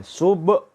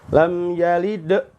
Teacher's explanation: kalau ditutup dengan suara hamzah, ini bisa suaranya putus. Ya, terjadi saktah. Walaupun itu saktah latifah ya, sedikit sekali.